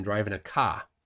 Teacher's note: there's somebody in Boston driving a ka, no R.